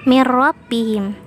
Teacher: Di sini suara nun mati dimasukkan ke dalam huruf idgham, yaitu ro. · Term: idgham bila gunnah